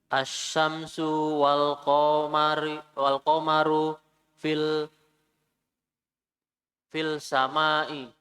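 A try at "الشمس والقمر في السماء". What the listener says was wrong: Fil samai atau fis samai? Karena dia alif lam syamsiyah. Asyamsu wal qamaru fis samai. Asyamsu wal qamaru fis sama'i.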